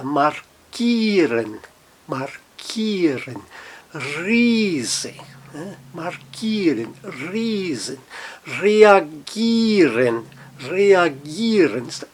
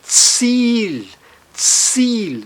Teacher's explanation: o I e o E fazem o fonema, o som de um I, só que um I um pouco mais alongado, e ele vai aparecer na transcrição fonética, no dicionário, com dois pontinhos, um I alongado. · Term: I longo